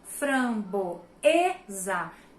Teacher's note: E sou paroxítona, ou seja, a minha sílaba tônica está na penúltima sílaba da palavra